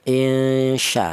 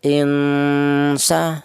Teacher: Di mana ikfa pertengahan itu artinya tidak terlalu samar juga tidak terlalu dengung ya. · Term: ikhfa ausat